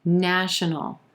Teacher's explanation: 3 syllables here, emphasis on the first syllable and the A as in black vowel sound